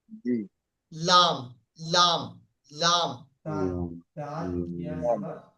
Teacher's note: আগার কিনারা এবং সামনের সামনের উপরের আটটি দাঁতের গড়ার সাথে লাগিয়ে উচ্চারিত হয়